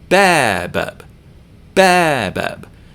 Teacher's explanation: Notice how much more loudly and with how much more duration I pronounce the first syllable than the second.